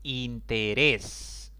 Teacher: por lo tanto la regla dice que debo ponerle tilde interés es una palabra de tres sílabas contando de izquierda a derecha la mayor intensidad cae en la última sílaba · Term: palabras agudas